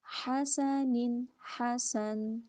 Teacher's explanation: ہا میں سانس، سین میں سیٹی